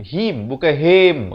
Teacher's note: Mim ha baris bawah bunyi hi, bukan bunyi he. Jadi bunyi him di sini. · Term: izhar syafawi